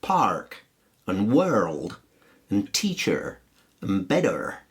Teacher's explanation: in American English, the R is always pronounced